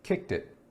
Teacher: kicked and it can actually be linked together